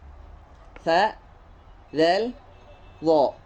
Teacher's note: Huruf lathawiyah itu adalah huruf yang mana makharijul hurufnya keluar dari ujung lidah.